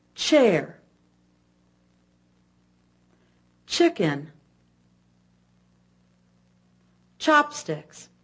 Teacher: and pushing the lips outward the teeth are shown clenched together the tip of the tongue touches the top of the mouth air is blown through quickly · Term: CH sound